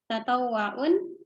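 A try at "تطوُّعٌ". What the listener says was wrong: Tatawwu'un. Wu bukan wa. Tatawwu.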